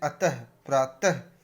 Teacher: विसर्ग, अक्षर के अंत में लगने वाले 2 बिंदुओं अक्षर के अंत में लगने वाले 2 बिंदुओं, ये जो अक्षर के अंत में लगते हैं को विसर्ग कहते हैं। इनका उच्चारण हल्के से ह शब्द की भांति होता है